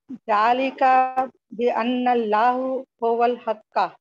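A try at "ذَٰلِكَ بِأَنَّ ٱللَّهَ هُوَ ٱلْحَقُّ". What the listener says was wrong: अन्नल्लाहु नहीं होगा, अन्ना के बाद हमेशा जबर लगा, अन्नल्लाह।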